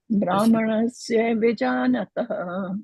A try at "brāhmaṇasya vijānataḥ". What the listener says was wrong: Brāhmaṇasya, not ye.